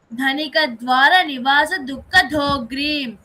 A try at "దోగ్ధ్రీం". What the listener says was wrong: గ్రీమ్ అంటున్నావు, కింద దావత్తొద్దా? తినేసేసావా? అన్నంలాగా తినేసేసావా అక్షరాన్ని? దాని దోగ్ధ్రీం.